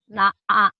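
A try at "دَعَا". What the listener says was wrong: Da'a. Bukan na'a. Da-nya ketukar sama nun, Ibu.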